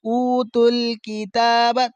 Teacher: تا پر کھڑا زبر ہے اس لیے کھینچ رہے ہیں ایک الف کے برابر